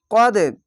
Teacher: কল কলা ধাক্কা মেরে নিচে সাউন্ড আসবে